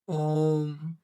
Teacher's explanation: प्लुत स्वर जिसमें बहुत ज्यादा समय लगता है बोलने में ओम ठीक है तो उसे प्लुत स्वर कहते हैं।